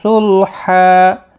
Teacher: وقف کی صورت میں 2 زبر کو بدل کر 1 زبر کے ساتھ وقف کریں گے، الف مدہ بنے گا، 1 الف کی مقدار کے برابر کھینچ کر وقف کریں گے۔ ملانے کی صورت میں ادغام مع الغنہ ہوگا۔